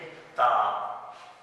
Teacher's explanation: जब हम ता की अदायगी करेंगे तो हम अपनी जुबान जो है ऊपर वाले दांतों के पीछे, मसूड़ों के बिल्कुल नीचे जहां से हमारे दांतों की जड़ है वहां पर लगाएंगे